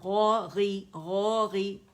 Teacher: خی اینڈ قی اینڈ غی natural way میں پڑھیں گے, اسے موٹا کر کے باریک نہیں کریں گے. یہ نیچرل وے میں موٹائی میں اس کی کمی آئے گی تو اس طرح پڑھیں گے غو غی.